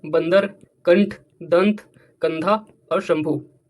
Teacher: क्या होते है इनका उच्चारण जोर से होता है और इनम उच्चारण करते समय ध्वनि जो है नाक से निकलती है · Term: अनुस्वार